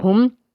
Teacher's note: میم ساکن ہے، میم ساکن کے بعد حمزہ ہے، اس لیے یہاں پہ اظہار شفوی ہے، غنہ نہیں کریں گے